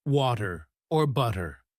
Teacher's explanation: the flap t sound where the t sounds like a soft d as in water or butter. Learners often either overemphasize the t or avoid it entirely, making their speech sound less natural.